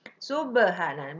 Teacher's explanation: Di tengah kalimat itu qalqalah sugro, mantulnya kecil.